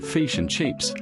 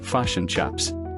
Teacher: An Australian speaker will sound more like fish and chips, drawing out that I sound, whereas a New Zealander will shift the I to a U, pronouncing it like fish and chaps.